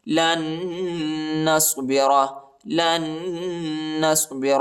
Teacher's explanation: اس نون کے اوپر جو ہے شد آیا ہے اور غنہ بھی کرنا ہے